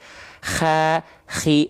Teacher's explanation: kho itu punya sifat hams yang berupa dengkuran. Seperti ngorok, kayak ngorok walaupun bukan ngorok, tapi kayak ngorok.